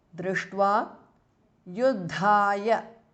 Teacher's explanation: the second Dha is Mahapranaha.